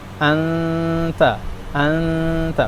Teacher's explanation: jangan langsung ke huruf t-nya tetap dengungnya dibaca juga.